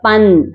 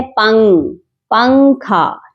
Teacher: Direct ہم جو ہے نون کی آواز کو، نون کے مخرج کو کلیئرلی ادا نہیں کر رہے ہوتے. یعنی ہم اپنی زبان کو اوپر تالو کے ساتھ ٹچ نہیں کرتے جس سے نون کا مخرج ادا ہوتا ہے. پن، ہم ایسے نہیں پڑھتے، بلکہ ہم کہتے ہیں پنگ، پنکھا. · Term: اخفا